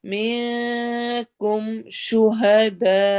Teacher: سے پڑھنا ہے، وَيَتَّخِذَ مِنکم شُہَدَاء، میں پہ اخفا کرنا ہے، کم شہداء میں ہم نے دال مد کو لمبا کرتے ہوئے حمزہ پہ جھٹکا دینا ہے